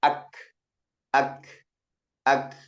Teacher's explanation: suaranya tidak mengalir, tapi ada sedikit aliran napas. Ya, suaranya terhenti, napasnya tetap mengalir. · suaranya tertahan karena rapatnya makhraj. Ya, makanya ketika kita sukunkan, terutama kita sukunkan ak, ak, suaranya tidak mengalir, tapi ada sedikit aliran napas. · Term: syiddah